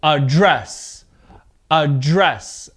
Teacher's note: Now with the verb, the stress is on the second part of the verb